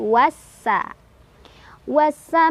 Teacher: Alif lamnya dilewat ya tidak dibaca langsung masukkan ke huruf ya langsung idamkan ke huruf Sin Oleh karena itu biasa disebut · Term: Idam Syamsiah